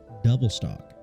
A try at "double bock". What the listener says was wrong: That's a double bock, buddy. Double bock. You said double stock. It's double bock.